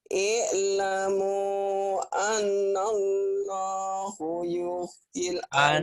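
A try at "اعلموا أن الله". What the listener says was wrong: Annallaha bukan hu. I'lamu annallaha yuhyil arda ba'da mautiha.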